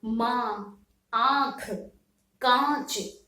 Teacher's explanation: मुख से और नासिका दोनों ही जगह से क्या वायु निकलती है और तब इसका उच्चारण किया जाता है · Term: अनुनासिक